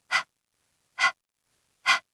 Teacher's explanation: To make the sound, we don't use our voice box at all. It's just air. It's the sound you make when you've been running fast and you're a little bit out of breath. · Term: H sound